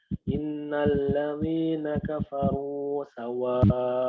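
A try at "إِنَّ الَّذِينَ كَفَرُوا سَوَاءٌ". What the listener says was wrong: Huruf zalnya jangan dikasih idgham. Innal ladzi di. Datar saja. Di. Innal ladzina kafaru. Innal ladzina kafaru.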